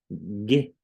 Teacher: son paladares verdad porque mi lengua está tocando arriba